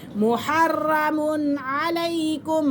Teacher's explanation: यहाँ पे हम गुन्ना बिल्कुल नहीं करेंगे क्योंकि आगे आइन है और यहाँ पे इजहार हल्की हो रहा है